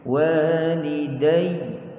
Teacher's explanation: Kita berhenti pada waw dan ya yang bersabdu, perlu naikkan sedikit suara kat situ. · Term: nabr